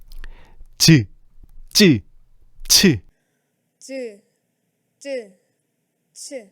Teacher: 혀의 앞부분이 센 입천장에 닿았다가 떨어지면서 만들어지는 소리들이야. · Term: 센 입천장 소리